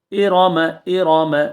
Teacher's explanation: ارم ارم را کو پر پڑا جائے گا جو را زبر کے ساتھ آئے گی یا پیش کے ساتھ آئے گی اس را کو پر پڑھائیں گے